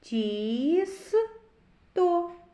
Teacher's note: у слові тісто перший звук ть М'який приголосний а четвертий звук т твердий приголосний